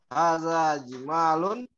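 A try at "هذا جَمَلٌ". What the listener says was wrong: Iya, panjang pendeknya, Pak, coba diperbaiki. Dipikir dulu, coba. Kalau jamalun nanti itu artinya indah atau cakep.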